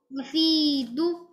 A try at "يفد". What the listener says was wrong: لا ما تطولها بسرعة. يفيد. يفيد. يفيد.